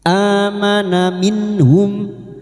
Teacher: Amana minhum nun sukun lagi bertemu ha idhar halki nun sukun dibaca jelas tanpa mendengung. Minhum ata mim sukun bertemu hamzah idhar syafawi mim sukun dibaca jelas tanpa mendengung.